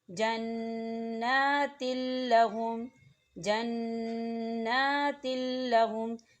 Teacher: اب آپ تنوین کی مثال کو دیکھیں، جنات لہم، جنات لہم، دیکھیں تا کے نیچے تنوین ہے اور تنوین کے بعد لام آ رہا ہے، لام کے اوپر تشدید ہے، اور لام جو ہے حروف ادغام میں سے ہے، تو یہاں غنہ نہیں ہوگا۔ ہم تنوین کو جو ہے لام کے اندر مدغم کریں گے لیکن غنہ ہرگز نہیں کریں گے۔